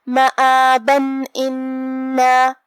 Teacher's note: ہم یہاں تنوین ظاہر کریں گے اور اسے نون ساکن پڑھیں گے اور بغیر غنہ سے یہ حکم کو ادا کریں گے